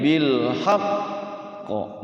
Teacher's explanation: ini bil haqqa ditahan, qalqalahnya bertasydid.